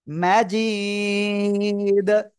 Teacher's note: কলকলার হরফ দাল ওয়াকফের কারণে এখানে সাকিন হয়ে যাবে এবং এজন্য ধাক্কা দিয়ে পড়বো